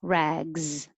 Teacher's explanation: That S looks like an S, but sounds like a Z.